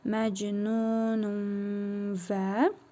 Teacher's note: tənvindəki nun hərfini burnumuzda tələffüz edərək bir əlif miqdarı uzadırıq. Vav hərfini isə şəddəli tələffüz edirik. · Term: İdğam